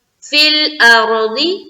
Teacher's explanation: فِي الْأَرْضِ را کو پر رکھیں گے اور کوئی بھی قاعدہ نہیں ہے، فا کو لام سے ملا دیا